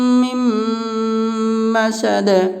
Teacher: فی جیدها حبل من مسد، یہاں پہ بھی نون ساکن کے بعد حروف ادغام کا 6 حرفوں میں سے میم ہے، اس لیے نون ساکن کا میم میں ادغام مع الغنہ ہوگا، یعنی غنہ کے ساتھ ملا کر پڑھیں گے